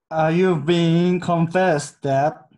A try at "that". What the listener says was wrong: 요 that 약했어요. 혀를 빼서